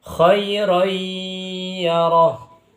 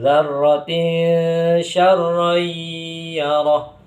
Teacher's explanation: Khair yaroh ini ketika ada tanwan atau fathatain bertemu dengan ya maka dibaca idgham bighunah. Jadi tanwanya dimasukkan ke huruf ya disertai dengan dangungan atau ghunah.